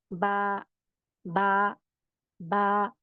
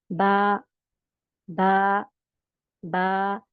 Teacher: अदायगी बहुत आसान है, अंदर का दोनों गीला हिस्सा, दोनों होठों का अंदरूनी गीला हिस्सा दोनों मिल जाएंगे तो बा अदा हो जाएगा